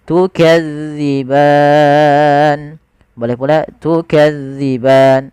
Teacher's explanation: Maka dia dipanjangkan sepanjang boleh 2 harokat, boleh 4 harokat, boleh pula 6 harokat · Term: mad arid lis-sukun